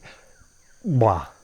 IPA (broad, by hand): ᵑᵐg͡bʷa